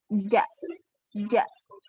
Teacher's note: Huruf ja itu tempatnya tengah lidah yang bergerak. Jadi tengah lidah itu dia menyentuh langit-langit atas.